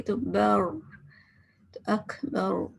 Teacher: یعنی کہ back of tongue جو ہے اس کو اٹھائیں گے، زبان کی جڑ کو اٹھائیں گے. تو بر، تو اکبر، تو یہ کیا بن گیا؟ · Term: ہیوی